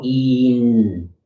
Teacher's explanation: So you go E. And so if you hold that and you are aware where your tongue is at, it's going to be back and up and high, kind of up in the roof of your mouth